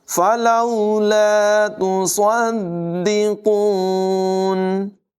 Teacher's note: فلولا تصدقون، صاد کو دال کے ساتھ ملائیں گے، دال مشدد ہے، حروف قلقلہ میں سے ہے، ذرا جم کر رک کر اس کو ادا کریں گے۔ صاد کی آواز بھی پر ہوگی، قاف کو بھی پر اور موٹی آواز میں پڑھیں گے۔